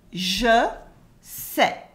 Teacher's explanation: the S at the end of sais for I know is silent